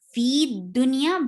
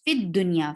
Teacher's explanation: Fa will be directly attached with dal, and this ya has dropped when you attach it with the other coming up word.